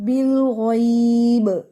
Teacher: جب بھی آپ با پر سٹاپ کر رہے ہیں اور با کو ساکن کر رہے ہیں تو پھر وہاں پہ آپ نے آواز دینی ہے ایکو کے ساتھ